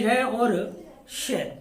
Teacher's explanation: इन वर्णों का उच्चारण मूर्धा से होता है, इसीलिए इन्हें मूर्धन्य वर्ण भी कहा जाता है।